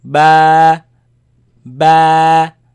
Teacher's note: is b comes from the lips but but it is elongated it is stretched because of the alif following it